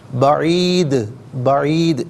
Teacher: ضلال البعید پڑھیں گے، وقف کی صورت میں ضلال البعید پڑھا جائے گا، اور چونکہ دال ساکن ہوگا، حرف کلکلہ ہے، تو یہاں آواز وقف کی صورت میں لوٹتے ہوئے محسوس ہونی چاہیے